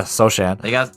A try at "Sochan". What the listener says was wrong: No, it's Sohan. Or Sohan? Yeah, the C is silent.